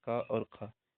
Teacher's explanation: जो हमारा पहला और दूसरा होता है जैसे क और ख ये दोनों अघोष है